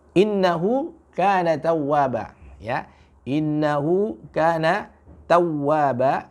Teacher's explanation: Di huruf waw, ya, di tasdid itu jangan terlalu lama kita baca. Ya, nanti kalau terlalu lama kita baca, ya, di situ ada tasdidnya, nanti akan mirip, ya, dengan mat gitu.